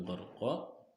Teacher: Huruf ro-nya dibacanya tafhim. Tafhim itu alias tebal dibacanya. Dan surah An-Nazi'at ini terjadi sebab huruf ro disukun oleh fathah.